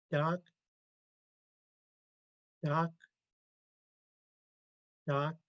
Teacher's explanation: it's almost like a longer k